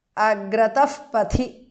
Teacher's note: Agrataha visarga changes to upadhmaniya.